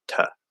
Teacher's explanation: there's not supposed to be any bit of high schwa in the reduction for two it's just ta he released the T and you just go